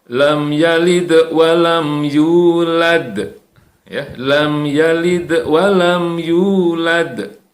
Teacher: tetap akhir ayat ada huruf dal yang harus kita pantulkan, harus kita qalqalahkan.